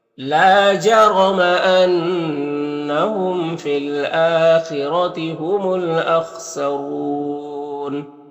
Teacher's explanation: खौ हुरूफ मुस्तालिया में से पुर पढ़ेंगे, रौ को ऊपर पेश है, रौ को पुर पढ़ेंगे · अन्नहुम नून मुशद्दद गुन्ना होगा, मीम में इज़हार शफ़ा भी हो रहा है।